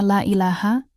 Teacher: Pada frasa la ilaha, kata la ini wajib dibaca panjang, minimal 2 harakat